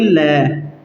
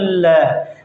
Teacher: जिस ध्वनि का उच्चारण करते समय हवा जीभ के दोनों पार्श्व मतलब बगल के भागों से बाहर निकलती है उसे पार्श्विक व्यंजन कहते हैं। किसे कहते हैं, पार्श्विक व्यंजन, जिसका उच्चारण करते समय जो हवा है जीभ के दोनों साइड से, बगल से, दोनों बगल, बगल कहते हैं आसपास, ठीक है, दोनों तरफ उसके पास पास से बाहर निकल जाएगी, उसको ही हम पार्श्विक व्यंजन कहते हैं।